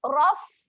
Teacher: Kembalikan sahaja makhrajnya ke tempat asal. Gigi kapak berjumpa dengan bibir bawah. Raf. Okay, dan dia ada keluar angin sedikit.